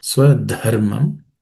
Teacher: the letter dha is again aspirated.